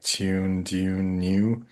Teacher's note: I have the glide and like tune, dune, new